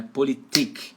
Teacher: em alemão a sílaba tônica fica em cima do último I